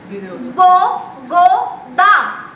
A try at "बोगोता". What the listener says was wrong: बोगो दा नहीं मतलब बो ठीक है सही है ठीक है ठीक है जो पीछे बोल रही हो ना वो गलत बोल रही हो अच्छा मतलब बोगोता